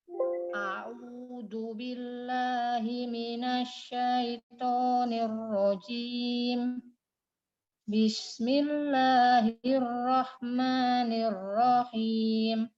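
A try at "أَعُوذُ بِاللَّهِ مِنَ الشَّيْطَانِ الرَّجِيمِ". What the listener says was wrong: Itu pertama huruf ainnya a'udzu billahi minasyaitonir. Sama roknya tipis saja. Bukan tipis, getarannya sekali atau 2 kali. Minasyaitonir rajim. Sama minasyaitonir rajim. Jangan terlalu lama-lama di ya-nya. Harus langsung. Minasyaitonir rajim.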